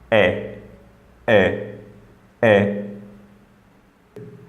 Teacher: when I produce the Hamza sound, the air is completely blocked under the glottis, then it releases abruptly.